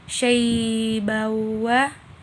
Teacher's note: idgham bigunna karena terdapat fathatain bertemu huruf waw. Cara membacanya dimasukkan ke dalam huruf waw.